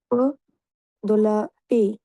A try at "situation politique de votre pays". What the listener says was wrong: দোলা আবার হবে কেন সিচুয়েশন পলিটিক দো ভত পেই এই কথাটুকু বলতে তো খুব বেশি সময় লাগার কথা না